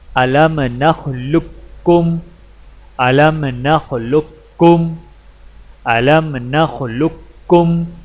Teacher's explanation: قاف کی آواز کو بالکل ختم کر کے صرف ایک کاف مشدد سے پڑھیں